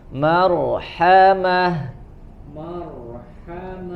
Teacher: Huruf rnya tebal karena sebelumnya harakat fathah